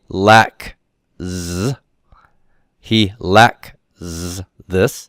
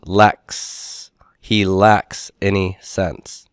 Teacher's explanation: There's no vocal cord vibration, and so the Z devoices in partial assimilation so that I get an S sound. Basically, an S is a Z that is unvoiced.